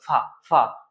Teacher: इसमें ऊपर के दांत और नीचे का होंठ का प्रयोग होता है, इसलिए इसको बोलते हैं कि इसका प्रयोग दंत ओष्ठ है।